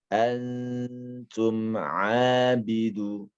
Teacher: Yakni huruf ain ini keluarnya pada tengah tenggorokan kita. Ya, boleh disentuh mungkin bagian jakun, ya, jakun kita di sini.